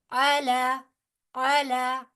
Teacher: आइन जो है वस्ते हलक से अदा होगा। अला, लाम के ऊपर फिर खड़ी जबर है।